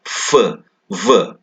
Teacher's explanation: lower lip moving and touching the upper teeth